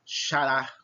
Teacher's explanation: Xará, sílaba tônica, é a última. Eu demoro mais, eu me prolongo, eu pronuncio com mais força a última.